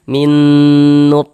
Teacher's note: Jadi bagian minnya itu kita tahan sejenak suaranya kita panjangkan. Nah, sepanjang dua harakat.